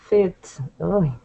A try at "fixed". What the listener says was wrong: No. Because it sounds like you're just saying fix. You want to say fixed. Try and make that t sound at the end.